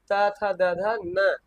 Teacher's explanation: दंत यानी दांत के सहारे से बोले जाएंगे